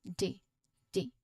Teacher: a strong D sound which is made by the tip of your tongue touching the roof of your mouth. D. So it's just behind your front teeth.